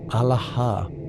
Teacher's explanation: Alaha is pronounced Alaha with equal emphasis on all three syllables and a strong aspirated H at the end. The sound starts in the belly, rises through the chest, and releases through the mouth with that final breath.